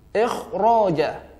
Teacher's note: bunyi kho-nya dibaca tebal. Ikh, bukan ikh, tapi ikh.